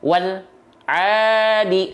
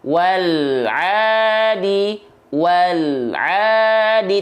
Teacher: Bacaan yang salah adalah memutus bunyi al kepada ainnya. Wal adi, salah.